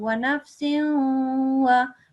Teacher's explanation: only the nasal sound from this tanween up to the wow will be prolonged. وَنَفْسٍ as soon as you say the wow, you stop saying it basically after a second.